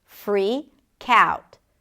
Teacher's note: the k sound of the word freak becomes the beginning of the next word, which is out